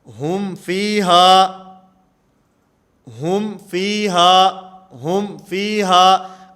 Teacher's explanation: اظہار کا معنی کہ میم کی جو آواز ہے اس کو بالکل ظاہر کر کے پڑھا جائے گا